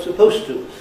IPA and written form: səˋpəʊstə (supposed to)